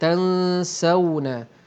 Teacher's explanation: Okey, wa tansawna di sini pun ada nun mati bertemu dengan fa, hukumnya ikhfa hakiki. Bunyi dengung dua harakat bercampur bunyi nun mati tadi dengan bunyi fa.